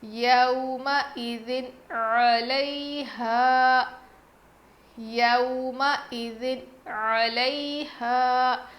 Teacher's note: تنوین کے بعد یعنی دو زیر کے بعد حروف حلقی میں سے عین آیا ہے، اسی لیے ہم نون کی آواز کو ظاہر کر کے پڑھیں گے